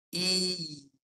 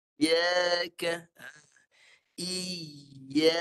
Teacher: Lepas I tengah lidah naik. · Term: ya mati